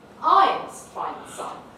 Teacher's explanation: it's the narrowest focus i can possibly have it's come right forward onto the pronoun at the beginning